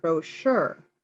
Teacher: I emphasize the second, brochure, because that's the French pronunciation.